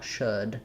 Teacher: And should is a great word to work on with this vowel, because when I do the sh, my lips tend to have a little bit of rounding, and so they're in a good shape for that lax, somewhat rounded vowel, should.